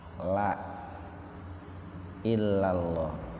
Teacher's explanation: Nah itu lam yang pertama itu dibaca tarkik